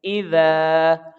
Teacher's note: کی پوری ہو رہی ہیں، تو لہٰذا یہ الف مدہ ہوگا، اس کی لمبائی ایک الف کے برابر کھینچ کے پڑھیں گے